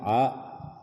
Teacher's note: Waja'alna jangan juga terlalu masuk, jangan dibaca waja'alna, tetapi cukup di tengah tenggorokan kita, wasatul halq